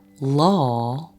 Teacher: in the American accent, you can also pronounce it like law, however with a dark L